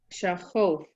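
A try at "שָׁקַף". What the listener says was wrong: No, there's no O.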